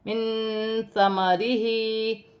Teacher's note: من ثمرہ، نون ساکن کے بعد حروف اخفا میں سے ثا آ رہی ہے تو نون ساکن میں اخفا ہوگا، ہا کے نیچے کھڑی زیر ہے، ایک الف کی مقدار کھینچ کر پڑھا جائے گا، یہاں پر الف مدہ ہے، اسے ایک الف کی مقدار کھینچ کر پڑھا جائے گا۔